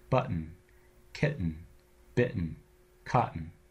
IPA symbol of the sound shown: ?